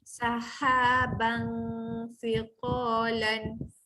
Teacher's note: Perbaiki ha lembut, ada angin.